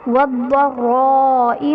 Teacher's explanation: ضاد حرف مستعلیہ میں ہے تو اسے ہم نے پر یعنی موٹا پڑھنا ہے، اور را پر زبر ہے تو را کو پر پڑھا جائے گا